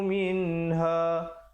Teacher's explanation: minha izhar halqi jangan dipanjangkan. Bunyi saja min terus masuk ha. Ha besar ya.